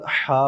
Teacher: جو الحمدللہ والا بھی ہا ہے وہ بھی حلق کے درمیان والا ہی ہے